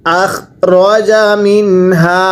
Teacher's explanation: নুন সাকিনের পরে হা থাকলে নুন স্পষ্ট করে পড়তে হয়